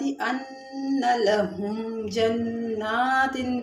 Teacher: لہم جنات میں اظہار ہو رہا ہے، میم ساکن کے بعد با اور میم کے علاوہ جیم آ رہی ہے